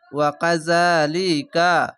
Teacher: খার যাবারে এক আলিফ টেনে পড়বেন।